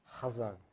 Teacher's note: So it's not like we pronounce it k, like the kazon, or ch, chazon. It's ha, chazon. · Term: The guttural